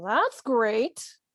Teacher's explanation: they've put stress on the word great